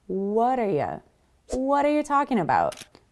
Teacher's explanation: when we have the T from what between two vowel sounds, the A in what and the A in R, what are, we actually turn that into a D sound. It's a softer sound.